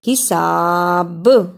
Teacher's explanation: رکنے کی صورت میں با پر قلقلہ بھی کرنا ہے